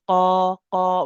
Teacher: initially the tongue will go up to touch the soft palate. And then when I drop this, when the tongue comes down to say qa, qa, when I move away, the tongue will be about here. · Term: qaf